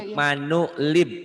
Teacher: Diwasol alifnya lib nih ibni. Lib, langsung lib gitu.